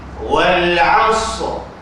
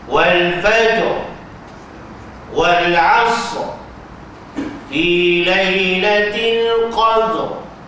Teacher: Wal 'asr, sad tu setengah harakat, ra tu setengah harakat, mati dengan tebal. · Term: waqaf isyarah